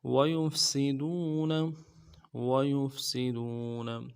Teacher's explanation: ان یوصل، ان یوصل ویفسدون، ویفسدون، واو کو نرم سے ادا کریں گے، یا کو فا کے ساتھ ملانا ہے، سین کی سیٹی باریک ہوگی، ویفسی، اور دال کو واو کے ساتھ ملانا ہے، واو مدہ ہے، ایک الف دال میں کھینچیں گے، نون کے زبر کو نرم سے ادا کریں گے۔